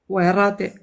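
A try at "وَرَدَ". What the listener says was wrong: Attention au del. Attention de ne pas trop amincir la voyelle. C'est vrai, c'est plus D que D. D. Faut, tu vois, essaye de bien le faire sortir en tout cas de la voyelle du bas de la gorge. Werode. Werode.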